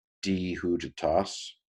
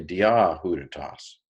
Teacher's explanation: Now, this is dia, but because the next word began with a vowel, it was easier to elide the alpha, di huditas, rather than say dia huditas.